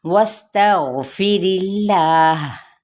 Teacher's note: इदगाम माल गुना का कायदा, सीन पे सीटी वाज़े करेंगे, गैनपुर पढ़ा जाएगा और इसमें जलाला का लाम बारीक पढ़ा जाएगा ज़ेर की वजह से।